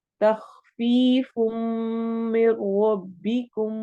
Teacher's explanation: मिर रब्बिकुम में भी इदगाम हो रहा है, लेकिन बिला गुन्ना, बगैर गुन्ना के हो रहा है।